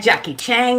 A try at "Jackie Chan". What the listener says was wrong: You put a G on it.